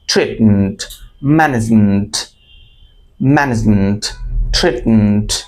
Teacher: এবং শেষের যে উচ্চারণটুকু MENT, এটুকু উচ্চারণটা খুব শর্টলি বলতে হবে।